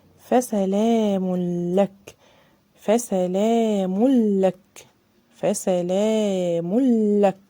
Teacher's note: دخلنا على طول على اللام، ما اديناش تنوين